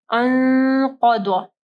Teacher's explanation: قاف کو ہیوی پڑھنا ہے اور ضاد کو بھی ہیوی پڑھنا ہے · نون ساکن کے بعد قاف ہے، ٹھیک ہے، تو اخفا غنہ ہوگا · نون ساکن کے بعد جو قاف ہے تو وہ ہیوی حروف میں سے ہے نا، موٹے حروف میں سے ہے، تو غنہ بھی جو ہے وہ موٹا کریں گے